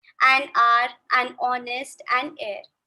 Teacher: Some words like are, honest, air begin with a vowel sound as the initial consonant h is not pronounced